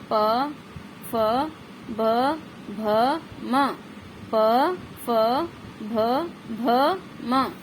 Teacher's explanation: दोनों होठों को मिलाकर के उच्चारण किया जाता है